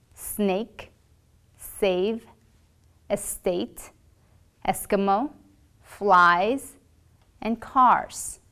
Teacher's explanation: place your tongue near the gum Ridge but not touching it you will blow air continuously and your vocal folds will not vibrate